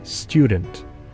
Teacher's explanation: For instance, some English speakers pronounce the word student as student. In rapid speech, the alveolar t assimilates to the palatal y and becomes palatal alveolar ch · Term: palatalization